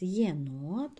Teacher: модель два склади єнот бо є дві голосні значить два склади є на початку два звуки